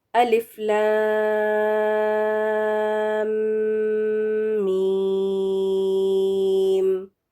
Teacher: اب الف پہ آپ دیکھیں، الف کے اوپر کوئی مد نہیں بنی ہوئی ہے تو اس کو الف ہی پڑھیں گے. لام کے اوپر مد ہے تو اس کو 6 کاؤنٹس تک کھینچیں گے، لمبا کر کے پڑھیں گے. اور پھر میم جو ہے نا وہ اور 6 کاؤنٹس تک کا ہوگا کیونکہ اس کے اوپر بھی مد بنی ہوئی ہے.